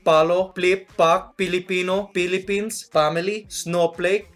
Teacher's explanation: The first thing to know is there are no F sounds.